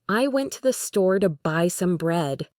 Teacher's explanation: You would not say, "I went to the store to buy some bread." You would say, "I went to the store to buy some bread." The key information, store and bread, gets the emphasis.